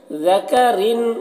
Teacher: را کو باریک پڑھنا ہے، اور را میں اظہار ہو رہا ہے، یعنی تنوین کو، را کی تنوین کو جلد پڑھنا ہے، تنوین کو ظاہر کر کے جلد پڑھنا ہے۔